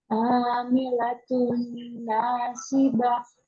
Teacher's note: tanwin bertemu dengan Nun Maka langsung dileburkan ke Nun Jadi bukan tanwinnya yang kita baca Tapi nunnya ini karena nunnya